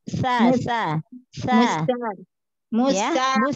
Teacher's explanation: ujung lidah ketemu dengan ujung gigi seri atas saja ya. Nah, berarti kan otomatis ujung lidahnya sedikit keluar. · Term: huruf sa